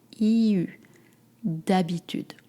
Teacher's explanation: To make the U sound, you go from E and then you bring your lips together, you don't move your tongue.